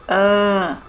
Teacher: Ã Não é tão forte quanto a letra A sem otil pois tem o som nasal que articula o nosso nariz durante a fala